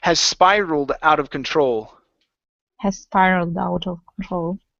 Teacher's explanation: connect the two s's